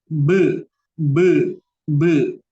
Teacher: Nah, be, bunyi be itu adalah tabaud. Jadi tabaud itu bunyi yang dihasilkan dari rapat ya, dari berdekatan terus ngejauh gitu.